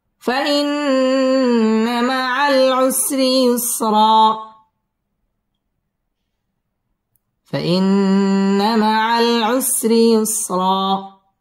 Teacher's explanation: فإن مع العسر র বারিক হবে। ইউসরা র পুর হবে এবং এখানে এক আলিফ টান দিয়ে ওয়াকফ করতে হবে, কারণ দুই জবরের বামে যদি ওয়াকফ হয় তাহলে এক আলিফ টেনে পড়তে হয়।